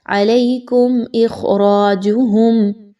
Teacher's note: میم ساکن کے بعد حمزہ کا حرف آ گیا، اگین اظہار شفوی یعنی یہاں پر آپ نے غنہ نہیں کرنا میم پر۔